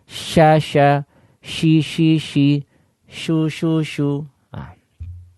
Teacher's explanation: diperhatikan suaranya bagaimana angin yang keluar dari mulut kita ketika huruf sin ini diucapkan ya terdengar banyak.